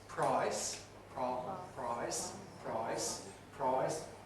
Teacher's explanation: the I vowel is in price, undergoes a change, it becomes backer, so we get price, price, price, price, or further still, it gets a bit of rounding, price, price, price, price. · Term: diphthong shift